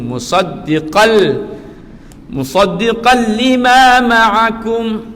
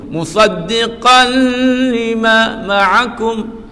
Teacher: Tanwin bertemu dengan lam, memasukkan tetapi tidak dengung.